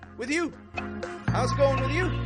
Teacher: Peaking your tone up on that with you.